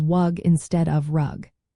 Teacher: gliding where L or R sounds are replaced with W or Y such as wug instead of rug